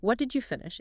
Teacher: It's seeking information, but the melody tends to fall.